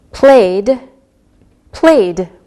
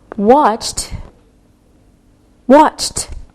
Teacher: we pronounce the E D sound like a soft D or a soft T